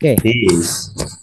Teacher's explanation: It's like there is a y in the middle